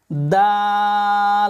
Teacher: জিহ্বার আগা উপরের সামনের উপরের দুই দাঁতের গোড়ার সঙ্গে লাগবে